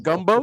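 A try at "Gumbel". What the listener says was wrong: No, Gumbo with an EL.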